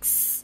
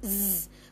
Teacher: you make the hissing sound with s which is like s and you make a buzzing sound with Z which is z So when you say s you feel that there is not · when you say s you feel that there is not much vibration and that is why s is a voiceless sound